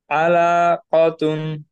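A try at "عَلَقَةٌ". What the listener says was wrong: হ্যাঁ, লামে কিন্তু একটু টান হয়ে গেল, এই টানটা হবে না, দ্রুত। আলা কতুন, আলা কতুন।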